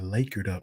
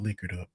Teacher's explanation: Articulate my vowels. It's long A, not short I. Lakered up, not liquored up.